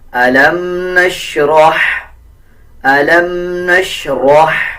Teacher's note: اسی طرح آگے دیکھیں، یہ باریک ہا ہے، اکثر لوگ جب اس کو پڑھتے ہیں تو اس طرح پڑھ دیتے ہیں جیسے علم نشرح، علم نشرح نہیں پڑھنا، بلکہ یہ باریک ہا ہے اور ہا کے اوپر جزم ہے۔ را کو ہا کے ساتھ ملا کے پڑھیں گے، را کو پر پڑھیں گے اور ہا کو باریک پڑھیں گے